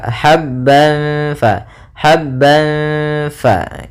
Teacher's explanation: Habban fa, itu sambil ditahan gunnahnya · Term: ikhfa hakiki